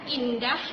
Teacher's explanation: vokal yang diucapkan dengan bentuk mulut tidak memundar melainkan terbentang melebar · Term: vokal tak bundar